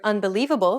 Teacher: When you say the word unbelievable, for example, do you notice how the li is accentuated? That's because it's pronounced longer and louder than any other syllable in the word, and this is what we refer to as stress.